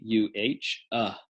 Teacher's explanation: just opening the mouth a little bit and letting some air move across the vocal cords with no modification in the vocal tract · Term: schwa sound